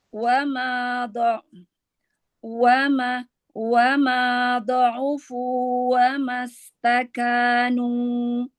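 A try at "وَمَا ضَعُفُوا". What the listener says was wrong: Ya, mundurkan lagi makhraj Sisi lidah lagi. Wa ma da'ufu.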